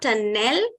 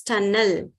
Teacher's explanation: whenever you have e and l together that e goes schwa and it's not L but it's Al so it's not tanel